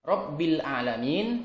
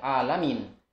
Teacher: yang seharusnya dengan Ain ada beberapa orang yang mungkin membacanya dengan Hamzah